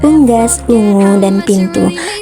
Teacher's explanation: vokal u dengan proses pembentukan tinggi belakang bundar